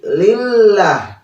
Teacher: ini hukum lam jalalah, yaitu tarkik ya, harus dibaca tipis